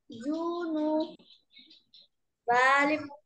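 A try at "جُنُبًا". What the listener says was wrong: জুনু, কয়ালিফ টান দিলেন।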